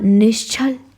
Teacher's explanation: अब विसर्ग के बाद आ गया छ तो यह भी तालुष स बन गया